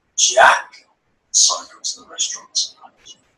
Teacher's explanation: Jack, pause, will cycle to the restaurant tonight. And the rest of the sentence, will cycle to the restaurant tonight, is all spoken very quickly, but Jack was very slow and meaningful.